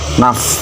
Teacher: Ketika huruf fa itu mati, maka keluar angin huruf fa-nya. Huruf fa itu termasuk huruf yang keluar dari dua bibir. Jadi keluarin dari dua bibir dan mendesis suara fa-nya. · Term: hamas